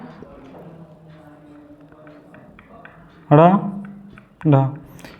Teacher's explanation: इनके उच्चारण में जीभ ऊपर उठकर झटके के साथ नीचे आती है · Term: उच्छिप्त व्यंजन